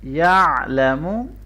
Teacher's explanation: आइन को अच्छी तरह से गले के दरमियान से पढ़ेंगे